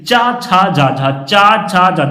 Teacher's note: तो जब आप चा बोले लेंगे तो आपकी जीभ है आपके तालू को स्पर्श करेगी जब तक आपकी जीभ आपके तालू को स्पर्श नहीं करेगी तब